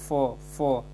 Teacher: ओष्ठ ध्वनि फ, जब फ बोलेंगे तो दोनों जाओ ऊपर नीचे का ऐसे ओठ है जो आपस में टच करता है